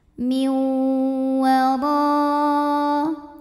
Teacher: Karena ada nun sukun yang menghadapi huruf waw, maka nunnya masuk ke waw, miu sambil didengungkan. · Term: idgham bi gunnah